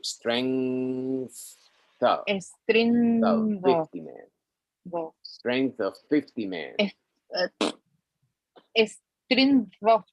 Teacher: Esa N con G suena atrás. Strength suena atrás, o sea, la N se pega atrás en el paladar blando.